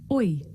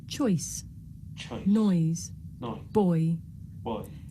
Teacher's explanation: This is a diphthong, a double vowel sound. The shape the mouth makes changes from the beginning of the word to the end. It's pronounced oi.